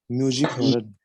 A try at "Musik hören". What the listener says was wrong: Musik, not music.